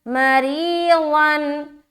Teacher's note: مَرِيضًا، मरीज़न, मीम ज़बर मा, रा या ज़ेर री, या मद्दा करेंगे, रा को बारीक रखेंगे क्योंकि ज़ेर है रा के नीचे